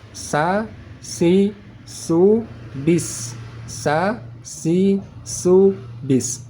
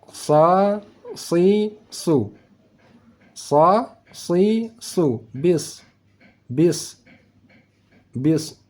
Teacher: cara baca huruf Sin agar tipis tidak tebal maka pangkal lidah kita tekan ke bawah supaya tidak naik ke ke atas kalau sudah naik ke atas berubah menjadi huruf sad